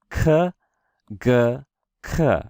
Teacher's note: these are made when the back of your tongue hits the top of your mouth